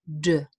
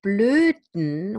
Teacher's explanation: the D usually is a plosive. If I say it in isolation, it's d. If I say dolphin or delphine, it's dolphin, delphine. So there is release of the stop. But with blöden, we have nasal release. So the air that would be released as in dun, d, through the mouth is released through the nasal, through the nose.